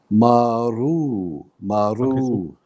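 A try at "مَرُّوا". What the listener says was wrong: Okay, so join your meme onto the ra because it's shadda. Marru. Say mar. Ru. Marru. Okay, so I'm going to write this in English for you here at the bottom. So M-A, how would you say that? Ma, right? And then R-double-O. That's maru, correct? Now we want a ra here also.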